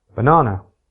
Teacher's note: For example, in banana, the second syllable is louder, higher, and longer. In contrast, the first and third syllables are quieter, lower, and shorter. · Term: unstressed syllables, stress